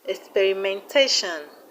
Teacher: The stress is on ZA. We have experimentation, experimentation. The stress is on TAT.